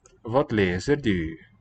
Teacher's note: It's really the U, front rounded vowel.